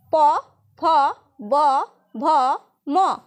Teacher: এই ব্যঞ্জন ধ্বনিগুলি উচ্চারণের সময় ঠোঁট দুটি পরস্পরকে স্পর্শ করে। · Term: ওষ্ঠধ্বনি